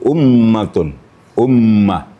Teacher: tasdid tentang mim dan tasdid tentang Nun itu namanya wajibul gunna maka gunanya sampai tiga ketukan · Maka gunnahnya sampai 3 ketukan. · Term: wajibul gunnah